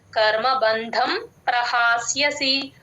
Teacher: పార్థ కర్మబంధం ప్రహాస్యసి ఇక్కడ యూజువల్ గా బ కి మహాప్రాణం పెట్టేస్తారు చూసుకోండి బ కి మహాప్రాణం లేదు ధ కి మాత్రమే మహాప్రాణం ఉంది కర్మ బంధం ప్రహాస్యసి ప కింద రకారం స్ట్రెస్ పట్టుకొని చెప్పాలి ప్రహాస్ యసి